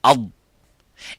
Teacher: for the dad, it doesn't stop completely, but release slightly towards the front, towards the makhraj of the lam, but it doesn't touch the front of the top front of the mouth.